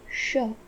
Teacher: इस वर्ण का उच्चारण करते समय हमें वायु का कॉन्शियस फ्लो अधिक रखना है और हमारी जीवा उच्चारण स्थान यानी कि मूर्धा से आधा स्पर्श करनी चाहिए, कुछ इस प्रकार श। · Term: महाप्राण वर्ण